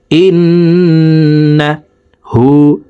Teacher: তাসদওয়ালা নুনের সাথে তিন সেকেন্ড পরিমাণ গুন্নাহ করে পড়ব